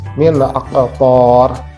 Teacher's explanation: di sini ada nun mati, min, kemudian ada huruf izhar. Maka kita baca secara jelas. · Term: idhar